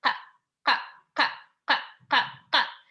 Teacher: Some people write it as number Q, but it's like K, but it's further in the throat. And that's like one of the hardest sound. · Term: number 9